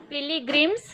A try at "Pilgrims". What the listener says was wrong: तुम ई में ई की मात्रा मत लगाओ बोलते समय. Pilgrims, छोटी की मात्रा है.